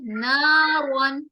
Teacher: را کو ہم موٹا کریں گے، کیوں؟ بیکاز را کے اوپر زبر آ رہا ہے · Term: را تفخیم